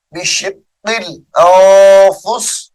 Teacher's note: وقف کی حالت میں اس کو بشق الانفس پڑھیں گے، یعنی سین ساکن ہو جائے گی